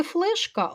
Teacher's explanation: в слові флешка л не в такій позиції В якій би він ставав м'яким тому він твердий